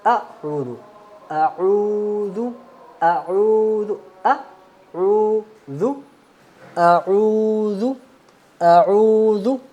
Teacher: حمزہ کو پڑھتے وقت خیال رکھنا ہے کہ اس کو جھٹکے سے پڑھنا ہے